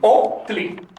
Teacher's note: el saltillo se pronuncia en náhuatl clásico como una suspensión de sonido